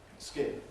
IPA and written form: skɪn (skin)